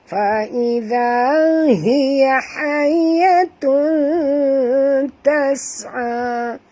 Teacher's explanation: Okey, tanwin iaitu baris 2 di hadapan bertemu dengan ta. Kita kena sorokkan bunyi tanwin ini pada kadar separuh ke dalam huruf ta disertai dengan dengung 2 harakat ikhfa hakiki.